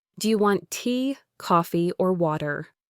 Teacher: If I ask, "Do you want tea, coffee, or water?" your voice would naturally rise on tea and coffee, then fall definitively on water, guiding the listener through the options. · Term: rising falling intonation pattern, rising-falling intonation pattern